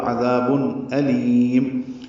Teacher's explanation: تنوین کے بعد حمزہ آنے کی وجہ سے اظہار ہوگا